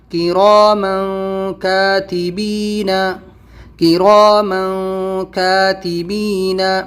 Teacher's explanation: इख्फा करने का तरीक़ा यह है, आपकी ज़बान आपके मुंह में कहीं भी टच नहीं होगी, आपकी ज़बान बीच में फ्री रहेगी। म नाक पे ज़ोर देना है आपको, अपनी ज़बान को ऊपर टच नहीं करना आपको